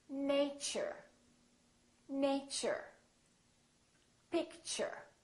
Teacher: So the T and U create a new sound, and it sounds kind of like ch.